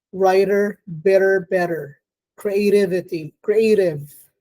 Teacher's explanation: it's a flap because the articulators quickly touch and move away from each other so the tongue tip touches the aler Ridge and then moves